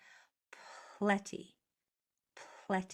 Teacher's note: hear how I pronounced that P sound more than the L the air came out more than the sound